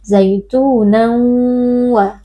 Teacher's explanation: Zaitunan wa idgham bi gunnah karena ada tanwin yang bertemu dengan huruf waw, tanwin dimasukkan ke dalam huruf waw lalu dibaca dengan berdengung